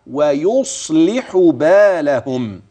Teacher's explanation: الحروف معنا ترقق في هذه الآية عدا الصاد ويصلح بالهم، فإن الصاد ساكنة نعم، مفخمة نعم، ولها درجتها في التفخيم فلا تقل ولا تزد